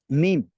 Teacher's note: میم دونوں ہونٹوں کے خشک حصے سے ادا ہوتا ہے